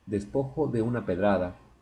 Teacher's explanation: Se juntaron de u y también por eso resultan ser ocho sílabas no nueve